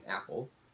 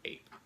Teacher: the a and apple doesn't drag on as much as the A and ape